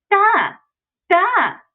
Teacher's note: so very voiced not plosive at all